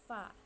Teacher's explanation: huruf fa yang pertama itu bersifat hamas, artinya samar, tidak terang, lawan dari sifat jahar